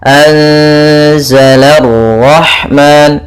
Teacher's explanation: anzala rahman, la tipis, ro-nya tebal. Anzala rahman, la baru langsung qara, la rahman. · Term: ra tafkhim